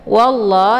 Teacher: Cara bacanya wawnya dimasukkan ataupun dileburkan ke dalam huruf la. dan untuk alif lamnya tidak lagi dibaca, atau kata lain juga disebut dengan idgham syamsiyah.